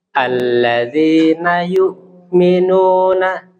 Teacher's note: Jadi Hamzah itu harus memotong suara.